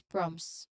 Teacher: the T is often elided or dropped in natural speech